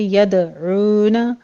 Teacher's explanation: 2 count کریں گے، دال کے اوپر قلقلہ کریں گے، یدعون عین کو وسط حلق سے ادا کرتے ہوئے واو مدہ ادا کیجیے